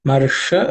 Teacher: the sha here is cerebral sha, so pay attention to that. The tip of the tongue should point to the roof of the mouth.